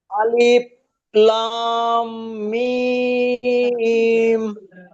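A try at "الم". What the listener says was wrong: আপনি টান তো দিলেন, কিন্তু মিমের উপরে গুন্নাটা কে করবে চাচাজি?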